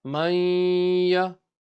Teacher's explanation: because it's a zabar, it's a harakat, you don't stretch a harakat. You don't read maya, don't stretch the ya.